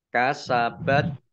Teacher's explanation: tak sukun itu t nya agak ada esnya sedikit saja